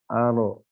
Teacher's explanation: huruf ro di sana berharokat fathah, berarti tebal. Kalau bahasa Syekh adalah mufakhom. · Dari sisi mufakhom dan tafkhim. Aro, ujung lidah huruf ro, yaitu bertemu dengan langit-langit atas, dekat gusi, tapi agak masuk ke dalam. Aro, tebal.